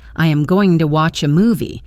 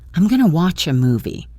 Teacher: the phrase going to almost always becomes gonna. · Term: reductions